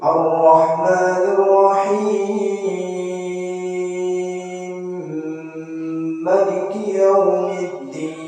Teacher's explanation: Imam Al-Kisai dengan mengidghamkan mim lafaz Ar-Rahim dengan mim lafaz Maliki sambil dikosarkan lafaz Maliki.